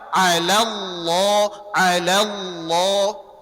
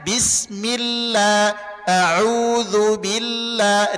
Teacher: Jadi kalau lafaz Allah sebelumnya fathah dan damah tebal dia. Tapi kalau sebelumnya kasrah tipis dia.